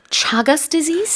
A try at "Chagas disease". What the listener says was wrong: Yeah, you can pronounce it chagas or chagus, I think, but it's a harder ch, I believe, than the Korean shagas.